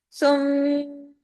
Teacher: जब दोनों मीम पढ़े जाएंगे तो गुना लंबा हो जाएगा। यानी आवाज देर तक नाक में छुपेगी। इसी का नाम गुना है।